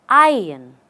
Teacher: I run we are not running anywhere you say ion ion just say I and the r goes away · Just say I and the R goes away and we have iron.